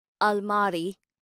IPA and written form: əlˈmaːri (almirah)